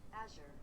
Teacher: it looks like it is the emphasis on the first syllable